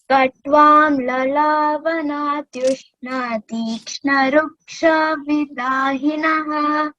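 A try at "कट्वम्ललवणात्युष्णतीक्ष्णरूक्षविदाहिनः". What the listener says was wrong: Very good. It is lavana. There is no a bar upon a after l, isn't it? Lavana.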